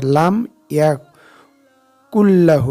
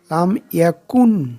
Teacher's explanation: কুন আছে কিন্তু কুন, নুন ড্রপ হয়ে গেছে, লা এসে গেছে